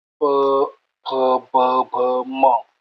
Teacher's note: ओष्टय ओठांना जे लागून जे उच्चार येतात ते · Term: ओष्ठ्य